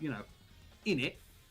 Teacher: Fact for you: the missing out of the T in British is actually called the glottal stop